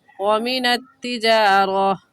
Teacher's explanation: گول تا پر جب وقف کریں گے تو وہ ہا بن جاتی ہے